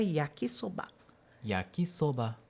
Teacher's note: Em japonês não existe a sílaba tônica. Não existe uma sílaba mais forte. São todas com a mesma força, digamos assim, só que ele vai diferenciar em modulação.